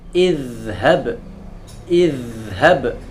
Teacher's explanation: Tidak boleh zal ini mantul menjadi idhab. Sering kali orang membacanya dengan cara memantul, sama seperti dal, padahal harusnya dia mengalir. Idhab. Kemudian ra, ra masuk ke bainiyah.